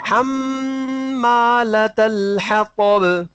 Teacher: تا کی باریکی اور طا کی موٹائی کا خیال رکھنا ہے کیونکہ دونوں کا مخرج ایک ہی ہے تو بالکل مشابہ جی نہ ہو جائے، ایک جیسے نہ ہو جائے.